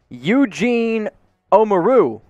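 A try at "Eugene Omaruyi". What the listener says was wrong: That's close. The first three syllables were right there. You just got to finish Eugene Omaru-Yee. Omaru-Yee.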